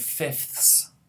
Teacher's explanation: we actually have three fricatives at the end in the coda, f, th, s. So even English speakers will often reduce this to fifths, and will drop that th sound because it's hard to say.